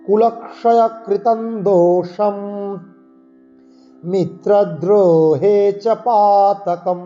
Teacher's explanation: কুলক্ষয়কৃতম দোষম, এই অনুস্বারের পরে দ আছে, তবর্গীয় বর্ণ, অনুস্বার পঞ্চম বর্ণের মতো, মানে নয়ের মতো উচ্চারণ হবে।